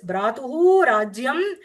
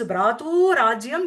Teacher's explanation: Bratuhu Rajyam becomes Bratu Rajyam because of the rule of Visarga Sandhi, where the Bratuhu, that Visarga gets Lopa as it is followed by the Rakara, and the Purva Varna gets the Dirga, that is Bratu Rajyam.